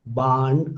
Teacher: Again you can sense that I am dropping the r.